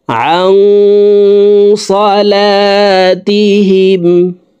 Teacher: আং এখানে ইকফা গুন্না, দেখুন নুন সাকিনের পরে ইকফার হরফ সদ আসছে, এই কারণে এই নুন সাকিনকে নাকের ভিতরে লুকাইয়া গুন্নার সহিত পড়তে হবে